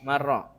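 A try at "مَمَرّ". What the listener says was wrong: Marro yamurru mamarrun. Ini harusnya ditasdid ya, ro-nya kalau di sini tidak ditasdid tuh. Harusnya ro-nya isim makan isim zamannya ditasdid, syaddah ala ro. Ditasdid ro-nya.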